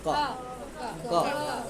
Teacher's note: आप प्रयास करोगे कि हम बिना अ के बोल लें तो संभव नहीं। अ आ ही जाएगा।